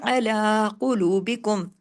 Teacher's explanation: لام کو 2 حرکات کھینچنا ہے کھڑی زبر کی وجہ سے، اعلیٰ قلوبکم، قاف ہیوی ہوگا۔